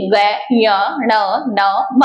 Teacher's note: इनका उच्चारण करते समय वायु जो है वो मुख के साथ साथ नासिका यानी नाक से भी निकलती है इस कारण इसे क्या कहेंगे नासिक के व्यंजनों के नाम से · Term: नासिक्य व्यंजनों